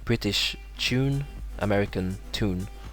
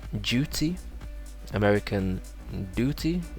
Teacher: this is called a y drop or this is a y dropping